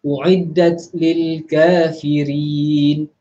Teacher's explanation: U'iddat lil. Keluar sedikit saja angin pada huruf ta mati itu.